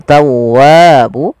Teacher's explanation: untuk Mad thii panjangnya adalah dua harakat